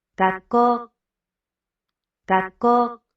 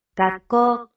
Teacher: you don't pronounce the U at the end. 学校、 Gakko, but you can hear the break before the ko. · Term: sukuon